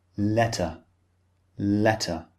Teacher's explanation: In British English, the T is clearly pronounced